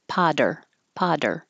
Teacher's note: The two T's will change to a D or technically a alveolar flap. Potter, Potter, and curl back for an R for American English.